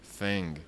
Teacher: j'ai placé la pointe de la langue contre les dents de devant et j'ai fait un I bref. Explosif, vertical. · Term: le TH